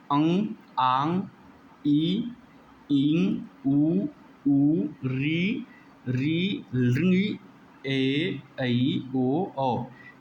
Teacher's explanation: मुख के साथ नासिका से भी उच्चारित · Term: अनुनासिक स्वर